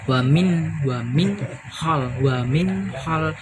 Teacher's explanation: Wamin hal berarti ini idhar. Wamin hal dibacanya jelas, yaitu karena nun sukun bertemu dengan huruf ha